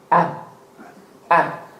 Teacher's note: Therefore, you say that the makhraj of the tha is what? The tip of the tongue slides outside between the teeth. It slides just between the teeth.